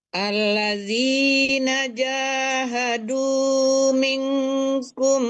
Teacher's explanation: Kalau nun ketemu kaf dengung. Itu nama hukumnya ikhfa hakiki.